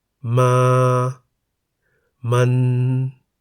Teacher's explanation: the single syllable in the word มัน is a live syllable because it has a sonorant final consonant น หนู